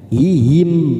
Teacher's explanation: setiap wakaf pada akhiran huruf mim harus terasa huruf mimnya, bibir kita menempel